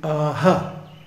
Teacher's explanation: what it means is that the final vowel is aspirated